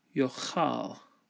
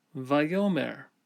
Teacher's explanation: the aleph in the peh position quiesces, and the vowel lengthens to a holum.